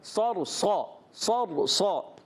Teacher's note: تو یہاں دونوں صاد موٹے رہیں گے, را بھی پور ہو جائے گا